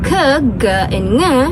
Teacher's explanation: the back of my tongue is approaching my soft palette